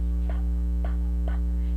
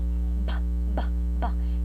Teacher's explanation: So obviously, the place of articulation of these phonemes here, the p and b, is bilabial. Both sounds are bilabial because their articulation involves the lips, which move together as p, p and b are produced.